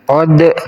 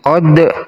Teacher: Dal sukun, hati-hati, ini adalah qalqalah, harus dipantulkan cara bacanya.